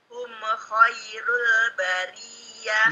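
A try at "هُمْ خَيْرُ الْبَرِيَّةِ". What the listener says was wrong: Me-nya hilangkan, hum dihilangkan. Hum khairul bariyah.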